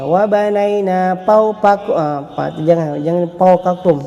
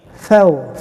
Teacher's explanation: Ada hamas juga, huruf fa di sini. Hamas maknanya berangin.